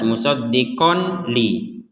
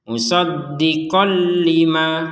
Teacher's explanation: Sehingga cara bacanya musaddiqal lima qolli. Jadi dimasukkan ini tanwinnya kepada huruf lam. Jadi jangan dibaca jelas. Kalau jelas musaddiqon li itu kan jelas itu. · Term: tanwin fathatain bertemu dengan lam